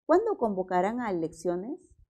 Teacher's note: Es una pregunta, pero está encabezada con un pronombre. Entonces, siempre va a ser pregunta. El tono es descendente.